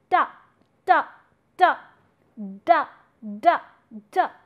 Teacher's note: you are touching the tip of the tongue with the upper teeth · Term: dental